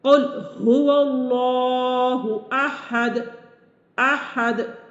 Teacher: دال اگرچہ متحرک ہے، چونکہ وقف کرتے ہوئے ہم نے اس کو خود ساکن کر دیا ہے، تو اب ساکن کرنے کی صورت میں یہاں پر جنبش پیدا ہوگی، ایک حرکت پیدا ہوگی، اسے کہتے ہیں قلقلہ کرنا.